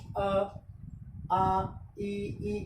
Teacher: कहीं पर भी गोल नहीं हो रहे, होठ फैले हुए रहते हैं। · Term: अवृत्तामुखी